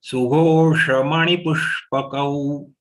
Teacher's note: this Sh has to be pronounced by taking the tongue inside.